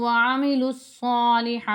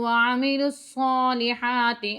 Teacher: یہ جو وَعَمِلُوا الصَّالِحَاتِ ہے یہ دیکھیں اس میں دو الف آ رہے ہیں، یہ نہیں پڑھے جائیں گے، اسے آپ نے اچھے طریقے سے سمجھنا ہے. لام کو صاد کے ساتھ ملا کر اس کے بعد آپ نے پڑھنا ہے